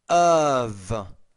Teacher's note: when the F is a voice consonant like this, it's more of a V